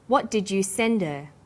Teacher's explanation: send is the strong form and her is weak because her is not stressed we drop the initial hurt sound so it's pronounced sender what